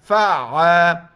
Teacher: عین گلے سے نکالیں گے